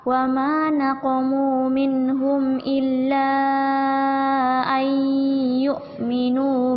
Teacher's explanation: nun sukun ketemu ya tasydid, artinya ditahan 2 harokat. Jadi tahan 2 harokat dulu di sini.